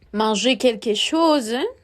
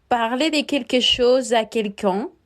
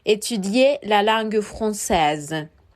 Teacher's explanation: al final de estos verbos en infinitivo omitimos el sonido de la R al final.